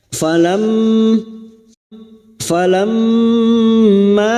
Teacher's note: mim yang bertasdid ghun musyadadah kita dengungkan selama tiga harakat